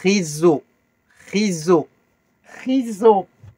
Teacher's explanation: On revient au R raclé au fond de la gorge comme le mot cracher.